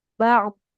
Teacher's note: Jangan bak, tapi huruf ainnya jangan jadi k.